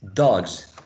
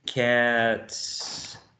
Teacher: in the second example, dogs, we're using a voiced z and a voiced sibilant z, and in the last example, cats, we're using a voiceless sibilant?